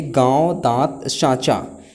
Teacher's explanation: उच्चारण नाक और मुंह से होता है और उच्चारण की लघुता होती है, जैसे गांव, दांत, सांचा।